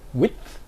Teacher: Now in another example we have a dental effect, for example in words such as width in present day English. You would have an effect of the fronting of the d, width, because the word final dental fricative automatically leads to this fronting effect, making the alveolar plosive, resulting in a dental articulation.